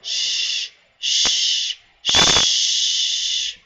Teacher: If you take your fingers and put them on your throat and make the sound shh, shh, shh, you should not feel any vibrations here in the back of your throat.